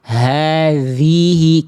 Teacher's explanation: di bagian hadhihi zal sama kayak dha ya harus ngalir. Jangan hadihi.